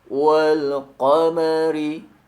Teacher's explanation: Kemudian pada ayat yang kedua, huruf Qaf pada kata wal qamari. Ucapkan huruf Qaf pada pangkal lidah dengan penekanannya pada sifatnya yaitu syiddah atau kuat. Perhatikan sekali lagi, wal qamari, maka huruf Qaf akan tampak bunyi dengan sifat syiddahnya atau kuatnya.